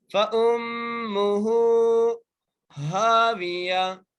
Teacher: ہا کو ایک الف کی مقدار کھینچ کے پڑھیں گے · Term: الف مدہ